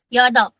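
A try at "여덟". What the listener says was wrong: Pero kailangan mas marinig ko po yung letter P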